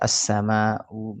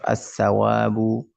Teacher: Jadi alif lamnya tidak dibaca. Langsung dia masuk ke huruf huruf setelah alif lam. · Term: idgham Syamsiyah